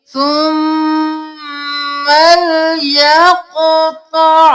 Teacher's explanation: कॉफ मोटा क़ मोटा, कॉफ पे कलकला करेंगे,